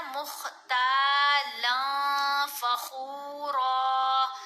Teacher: را کے اوپر زبر ہے، ساتھ الف ہے، تو یہ حرف مدہ ہے، اس کو ایک الف کی مقدار جتنا لمبا کر کے پڑھیں گے · اور جب نون ساکن یا نون تنوین کے بعد حروف اخفا میں سے کوئی حرف آئے تو ہم نے نون کی آواز کو ناک میں چھپا کر پڑھنا ہے. اب یہاں آگے ہم دیکھ رہے ہیں فا، تو فا حروف اخفا میں ہے، اس لیے ہم نے پڑھا مختالا فخورا.